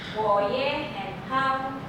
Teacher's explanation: Everything becomes second tone except the last one.